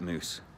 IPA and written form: ˈmuːs (mousse)